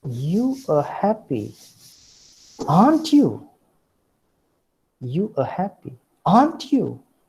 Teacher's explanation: So this is a tag question that makes use of falling tone.